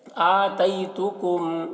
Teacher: آتیتکم، یہاں پر دیکھیے میم ساکن کے بعد میم ہے، تو میم کو میم سے ملا کر غنہ کے ساتھ پڑھیں گے، اس کو ادغام شفوی کہتے ہیں۔